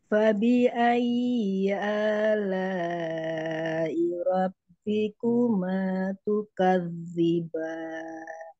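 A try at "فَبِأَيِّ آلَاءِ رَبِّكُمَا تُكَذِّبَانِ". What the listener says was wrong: Bagus, tinggal ya numbernya. Fabi ayyi lebih ditekan lagi. Kan number itu tekanan suaranya lebih dari yang lain ya. Jadi Fabi ayyi gitu.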